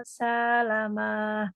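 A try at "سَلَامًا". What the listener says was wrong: Salahnya enggak panjang. jadi panjang pendeknya, panjang itu yang ada alifnya ya. yang ada alifnya ada dua aja, ada enggak ada tiga. Lam, lamnya dua, terus mim di akhir.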